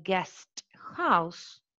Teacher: we retain the voiceless alveolar plosive sounds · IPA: /gest haʊs/